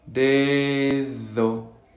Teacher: Y la segunda D es interdental, es decir, vamos a poner la lengua entre los dientes.